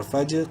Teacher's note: قلقلہ کریں گے جیم میں، جیم ساکن ہے اور حروف قلقلہ میں سے ہے.